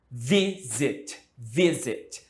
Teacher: A tônica está no início de novo.